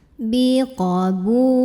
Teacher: Jadi bu-nya ini kita panjangkan 2 harokat. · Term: mad tabi'i